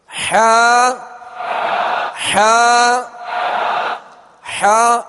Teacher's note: حا کا جو مخرج ہے وہ حلق کے درمیان والے حصے سے حا ادا ہوتی ہے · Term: وسط حلق